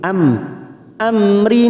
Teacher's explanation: mim sukun bertemu ro Idhar syafawi kita baca jelas tanpa mendengung